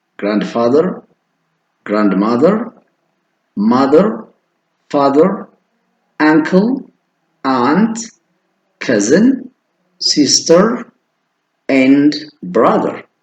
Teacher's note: rising intonation ይባላል ድምጻችሁ ከፍ እንዳለ ይቀራል አታርፉ ሙሉ ረፍት አታረጉ Bontu's father is a farmer her mother